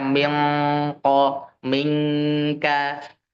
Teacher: Nah, untuk yang dibaca mendekati engnya kita di bahasa Indonesia itu ketika nun sukun atau tanwin itu bertemu dengan huruf qaf atau huruf kaf karena makrotnya ada di pangkal lidah bagian paling belakang. Posisi siap-siap menuju huruf qaf dan kaf itu akan terdengar seperti eng.